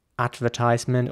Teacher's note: And the R in American English is also pronounced much more round, much rounder in my opinion. So it's advertisement.